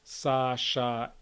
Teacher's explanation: Sa and sha are very loud, much darker, and the frication is much higher amplitude.